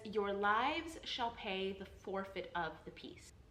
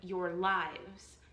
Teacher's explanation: That set of two syllables is an unstressed syllable followed by a stress syllable. So in the case of Prince Escalus's line, your lives, the stress is going to fall on that second syllable. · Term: metered line